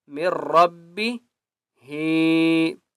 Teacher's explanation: یہاں پر بھی ہم نے میم کو را کے ساتھ ملانا ہے، نون کو نہیں پڑھنا،